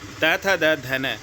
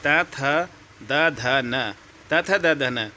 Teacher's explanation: जिनका उच्चारण ऊपर के दांतों पर जीभ लगने से होता है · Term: दंत्य व्यंजन